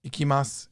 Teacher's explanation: then the su is low, but you hardly pronounce it